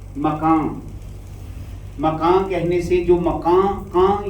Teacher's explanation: یہ جو ناک میں آواز آ رہی ہے یہ نون کی آواز ہے, لیکن یہ نون چونکہ ادا ہوتا ہے ناک کے بانسے سے, تو وہاں سے وہ ٹچ کر جائے گا. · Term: نون غنہ